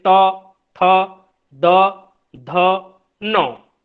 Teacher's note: फिर दंत्य, देखिए त थ द ध न, ये जो ध्वनियां हैं दंत्य ध्वनियां, हमारी जीवा जाकर दांत को स्पर्श कर रही है, हमारे दांतों को स्पर्श करती है, और फिर वहां से ध्वनि निकल रही है, वो कहलाएंगी दंत्य ध्वनियां।